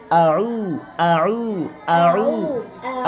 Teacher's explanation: ঠোঁট গোল হবে, আওয়াজ চিকন হবে।